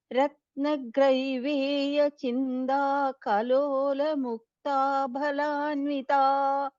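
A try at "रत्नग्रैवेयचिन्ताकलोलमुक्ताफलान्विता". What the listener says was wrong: The second line, I felt that pa sounded like a different letter for me. Phalanvita.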